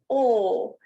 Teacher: you see my mouth is not too rounded and it doesn't transition like that diphthong does